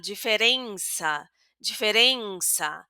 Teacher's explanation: Ya aquí en la segunda e de diferencia no tenemos una e abierta tampoco porque eh tenemos la n que ya que ofrece a esa e un sonido nasal